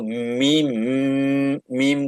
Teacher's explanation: মিম কিন্তু 2টা ঠোঁট, কিন্তু নেইজাল সাউন্ড, নাক নাক দিয়ে ইয়ে বের করতেছো